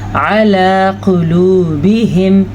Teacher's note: علی قلوبہم، یہ ہے موٹا قاف. اس کو آپ نے قلوبہم پڑھا تو بالکل غلط ہو جائے گا.